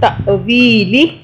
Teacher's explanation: الف کے اوپر جزم ہو تو کیسے پڑھتے ہیں؟ جھٹکے سے